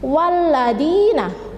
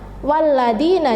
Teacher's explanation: Jadi lafadz walladina di sini ada ya sukun yang jatuh setelah kasroh, atau kasroh yang diikuti oleh ya sukun, maka membacanya walladina, jadi 2 ketukan atau 1 alif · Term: mat tabi'i